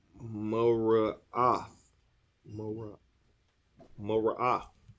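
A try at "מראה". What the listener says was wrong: Not the th. That's not a th at the end. Mara'ah.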